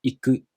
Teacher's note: This verb is the Heiban type, the flat type.